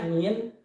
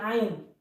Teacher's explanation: tempat keluarnya hurufnya yaitu dari tengah tenggorokan